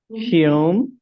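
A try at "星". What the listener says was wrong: Just flat, flat. Higher and flat, flat. Okay, remember, the first tone is the highest tone and flat. Xing, don't raise up. Xing, don't raise up.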